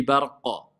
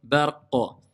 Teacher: C'est la grande résonance si je m'arrête sur le qaf. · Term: al-qalqala kubra